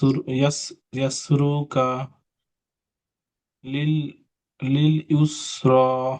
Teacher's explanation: এটা এসে রয়ের উপর খাড়া জবর রয়েছে, খাড়া জবরকে এক আলিফ পরিমাণ টান দিয়ে পড়তে হবে